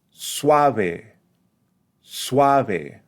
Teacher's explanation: giving more emphasis to the second vowel in the combination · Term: dip thong